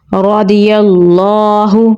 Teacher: را کو پر یعنی موٹا پڑھیں گے. ضاد کو بھی پر یعنی موٹا پڑھیں گے. یا کو لام کے ساتھ ملائیں گے.